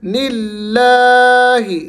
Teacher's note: لفظ اللہ کو آپ نے کھینچنا ہے لیکن باریکی کے ساتھ، موٹا نہیں کرنا۔